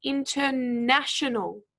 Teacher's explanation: for the word international we actually stressed the third syllable